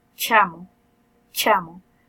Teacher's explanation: semiexclusivos porque ellos no hay un cierre completo completamente sino que hay primero un cierre y luego después del cierre hay una abertura por donde se desliza el aire